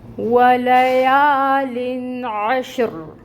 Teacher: عین کے اوپر فتح کی حرکت ہے، 1 کاؤنٹ، عین کو وسط حلق سے ادا کرنا ہے · الف سے پہلے یا کے اوپر فتح کی حرکت ہے، یہاں پر الف مد کا رول ہو رہا ہے، تو 2 کاؤنٹ کے برابر یا کو لمبا کھینچیں گے۔ لام کے نیچے زیر تنوین ہے اور آگے حروف حلقی میں سے عین آ رہا ہے، تو یہاں پر اظہار ہوگا، نون کی آواز کو ظاہر کریں گے۔ · واو ہے، لپس کو اچھے سے راؤنڈ کریں گے اور واو کی ادائیگی کریں گے۔ واو کے اوپر فتح کی حرکت ہے، انفتاح ہوگا، منہ کھلے گا، 1 کاؤنٹ حرکت ادا کریں گے۔